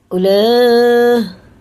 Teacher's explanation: واو نہیں پڑھا جائے گا بالکل بھی, یہ حرف حرکت ہے, بس حرکت کر کے اس کو پڑھیں گے